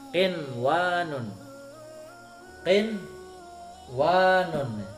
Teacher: Nunnya sukun ketemu wawu huruf idgham bihunah, tapi tidak boleh digunahkan, tidak boleh dibaca idgham, harus dibaca idhar. Kenapa? Karena ini adalah dalam satu kalimat. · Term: idhar wajib